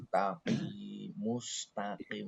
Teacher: Mus mus pastikan domah itu mesti mencucu ya. Domah itu mesti mencucu muss ditarik mus gitu.